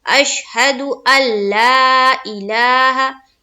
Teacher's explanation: बिल्कुल नून की बू भी नहीं आनी चाहिए